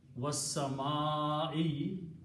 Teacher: It will not be a qasam, it will not be an oath. For the oath to happen, this last dhamma has to change into a kasra.